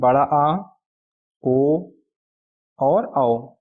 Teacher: इन अक्षरों को बोलते समय हमारा मुंह ज्यादा खुला रहता है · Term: विवृत स्वर